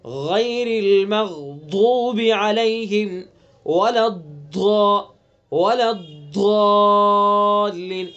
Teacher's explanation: حرف کی آواز کا آہستہ آہستہ دراز ہو کر حافظ لسان کے شروع والے حصے سے حافظ لسان کے آخری حصے تک پہنچ کر لام کے مخرج تک پہنچ جانا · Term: استطالت